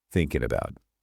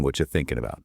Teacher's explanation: the G in thinking completely disappears, and the N connects directly to the A in about